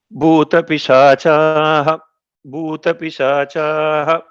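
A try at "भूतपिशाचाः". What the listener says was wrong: Not Boo, Bhoo. Okay. Mahapranas are important.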